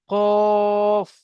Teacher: কফের পাশে স্টার চিহ্ন দেয়া আছে মানে কফকে পুর করে পড়তে হবে অর্থাৎ মুখকে গোল করে পড়তে হবে